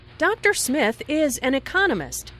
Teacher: notice the stress on economist this content word has new information so it is emphasized there are four syllables in economist